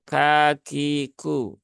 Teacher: Kaf dia ada hamsnya ya maka tunaikan hams Kaf tetapi jangan berlebihan cukup kagiku ya tidak perlu sampai kagiu k k k kiu